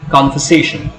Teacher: Main accent falls on the third syllable, but the first syllable also takes a slight emphasis, gets a slight emphasis. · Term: secondary accent